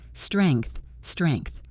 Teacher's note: the NG flows into the TH smoothly